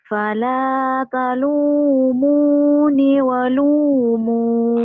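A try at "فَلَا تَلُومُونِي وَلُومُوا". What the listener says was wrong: Jangan. Maunya ninya panjang semua ini mah. Ninya panjang, Neng.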